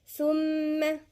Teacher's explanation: الثاء هنا من الحروف اللثوية، وبعدين الميم حرف غنة مشدد